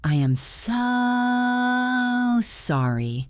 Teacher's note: The elongation of the word so emphasizes your regret.